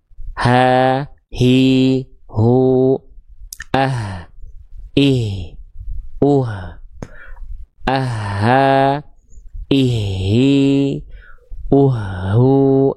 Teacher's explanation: ini H besar di sini. Di bagian pangkal tenggorokan.